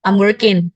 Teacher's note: Misalkan dalam kata I'm working itu bisa dibaca belakangnya menjadi n.